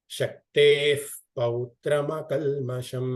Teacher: ವಿಸರ್ಗದ ಮುಂದೆ ಪಕಾರ ಇದ್ದಾಗ ನಾವು ಫಕಾರವನ್ನ ಯೂಸ್ ಮಾಡ್ತೀವಿ